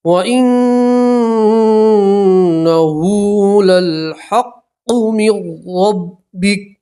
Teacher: وقف کریں گے تو کاف کے اوپر جزم پڑھیں گے